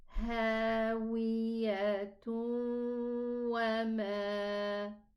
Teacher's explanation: But if I connect, it's going to be a ta, a proper ta with dhammatin. This is tanween. Coming after it a waw, it's going to be idgham with a gunna. So we are going to say hawiyatun wa ma.